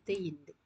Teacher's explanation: இரு மெய்யும் மேல்வாய் பல்லின் அடியை நாக்கின் நுனி பொருந்துவதால் பிறக்கும் எழுத்து